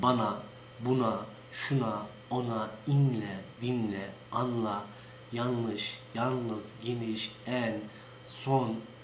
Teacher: Çünkü bu nazal N ile söylenen, genizden söylenen bir harftir. Ve bizim yörede bu N harfi her zaman genizden söylenir.